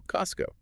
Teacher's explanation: That T sound gone because it's stuck between two other consonant sounds. S and C. So Costco.